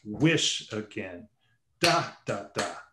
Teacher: that dactylic rhythm, the stressed and then two unstressed syllables